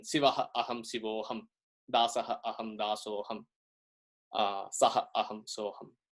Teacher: when such a Visargam interacts with an A in the coming word, it turns out that it becomes an O sound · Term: Visarga Sandhi